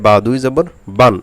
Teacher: এখানে যেন বান এই নুনে গুন্না না হয় সেদিকে খেয়াল রাখবেন। আবার বান এরকম যেন টান না হয়ে যায় সেদিকে খেয়াল রাখবেন। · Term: তানবিনের উচ্চারণ